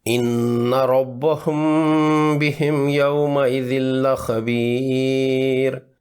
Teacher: میم ساکن کے بعد با مکسور، تو یہاں بھی اخفاء شفوی کا قاعدہ لگے گا۔ میم ساکن کو 2 حرکات لمبا کرتے ہوئے ناک کے بانسے سے ادا کریں۔